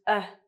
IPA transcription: ʌ